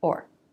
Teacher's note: Said very quickly, low in pitch. It can also be reduced, then it's pronounced The vowel reduces to the schwa.